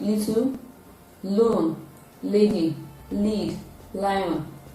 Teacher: at the tip of the tongue touching the availability and then there is a partial closure at the middle of the mouth to allow the free flow of it to come out of the two sides of the mouth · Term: voiced alveolar lateral sound